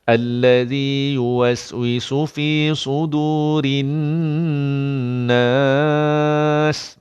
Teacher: Dan bila nun sabdu memang kena dengung. Dengung 2 harakat.